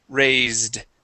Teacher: it is pronounced with a voiced S